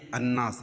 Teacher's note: الف پڑھی جائے گی اور لام نہیں پڑھا جائے گا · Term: حروف شمسی